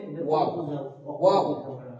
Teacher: ওয়াও বলার সময় ঠোঁটটা একদম গোল হবে এবং উচ্চারিত হবে ওয়াও ওয়াও।